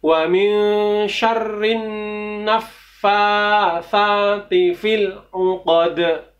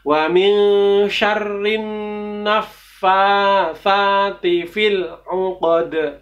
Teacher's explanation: Uqad dal itu bagian dari atau termasuk salah satu huruf qalqalah. Jadi harus dibendalkan juga.